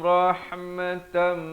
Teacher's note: Di sini idgham bi gunnah, daripada rahmatan jadi tam, ya. Rahmatam 2 harakat sempurna terus masuk min.